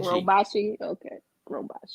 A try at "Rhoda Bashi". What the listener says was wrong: Rhoda Bashi. So Rhoda Bashi. You just put a D on it. Rhoda Bashed. Rhoda. Bashi.